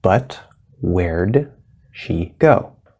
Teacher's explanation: we're going to go straight from the er to the d which is supposed to be a stop d where but then we have that sh and she have to